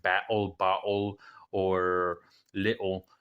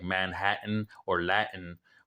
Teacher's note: we tend to have a little gap, that little stop of air in our throat. That is the Glottal Stop.